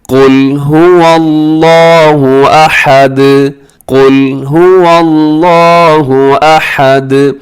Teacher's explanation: هو اللہ احد، اسے آحد نہیں پڑھنا بلکہ احد، ہا کا خیال رکھیے گا. اور آخر میں دال کو آپ نے ہلانا ہے، اس کی آواز کو ڈبل کرنا ہے کیونکہ وہ حروف قلقلہ میں شامل ہے